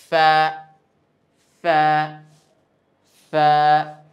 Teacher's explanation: নিচের ঠোঁটের পেট সামনের উপরে দুই দাঁতের আগার সঙ্গে গিয়ে লাগিয়ে উচ্চারিত হয়